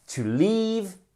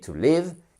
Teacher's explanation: j'exagère un peu sur la longueur de la voyelle mais c'est pour bien marquer pour que vous l'entendiez et que vous ne disiez surtout pas to live parce que